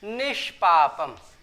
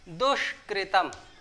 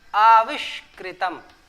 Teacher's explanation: यहां ई और उ की मात्रा होने की वजह से मूर्धन्य श षटकोण वाला श हुआ।